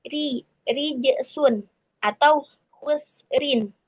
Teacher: Nah, itu ro kasroh tanwin harus dibaca tipis.